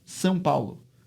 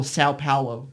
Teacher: you have to say it with the nasal diphthong